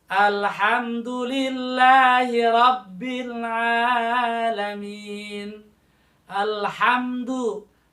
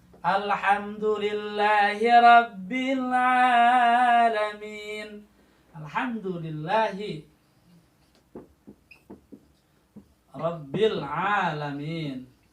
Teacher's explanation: Alif lam al ha. Lamnya jelas, izhar.